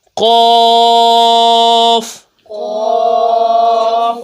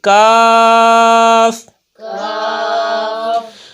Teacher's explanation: جس قوف کے اوپر دو نقطے ہیں اس کو موٹا پڑھیں گے، حروف مستعلیہ میں سے ہے یہ